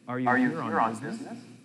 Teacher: In a sentence with rising intonation, the voice goes up at the end. Listen to the way my voice goes up at the end of this question.